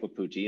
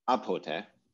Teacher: the initial W changed to an initial yod or initial glottal stop in pronunciation